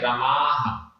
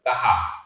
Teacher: संस्कृत का जो विसर्ग है उसका लोप हो गया है, हटा दिया गया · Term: विसर्ग हटा दिया